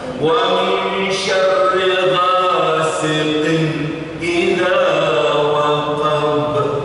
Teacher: Ada qaf bertanwin jumpa dengan hamzah izhar tanpa dengung sama sekali.